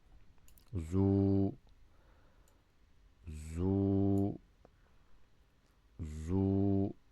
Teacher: The za with Dammah is zu. The waw extends the Dammah.